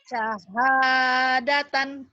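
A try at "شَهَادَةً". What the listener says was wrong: Shin, kurang sini. Syahadatan. Syahadatan.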